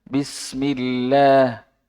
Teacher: huruf fathah, tidak terbuka sepenuhnya. Jadi huruf a juga tidak terlalu miring.